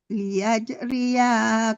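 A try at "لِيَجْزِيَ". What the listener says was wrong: liyajziya, zi bukan ri ya, liyajziya qauman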